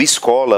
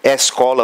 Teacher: escola com som fechado ainda escola com som aberto né dependendo da do estado em que se esteja